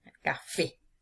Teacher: Fíjense aquí en la palabra café. Se carga la voz con mayor intensidad en la última sílaba que es fe. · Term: palabra aguda